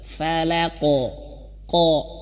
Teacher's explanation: qaf itu dia memiliki sifat tebal, maka pantulannya ke tebal. Falaqo, ko, nah gitu ya, falaqo, bukan tipis. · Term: qalqalah